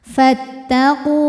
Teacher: Maka fa baris fathah tetap pendek, langsung tekan ke ta.